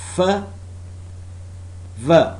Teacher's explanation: Labiodental. The articulators involved are lower lip and upper teeth.